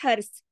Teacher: اگر رکیں گے تو ہرس جماؤ کے ساتھ سا پہ رک جائیں گے. ادھر کلکلا نہیں کر دینا, ہر سا ہلانا نہیں ہے.